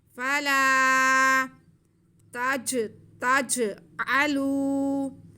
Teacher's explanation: لام کو ہم ایک الف کے برابر کھینچیں گے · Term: الف مدہ